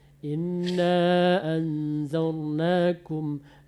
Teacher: ro mati sebelumnya baris patah, baris atas, maka dia ditebal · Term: ro tebal